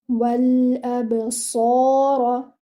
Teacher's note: Your sad should be heavy, not like seen. It should be heavy and it should be given 2 counts because it is with this alif saghira.